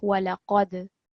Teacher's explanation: There was a qalqala on the dal sakin over here, but also remember that we want to make the qaf a bit thicker because it's a thick letter